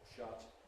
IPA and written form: ʃʌt (shut)